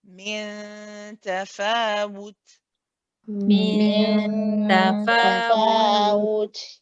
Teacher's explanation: the ghunna here is a kamil ghunna, so it's a complete ghunna, and that's why we stay on it for a little bit.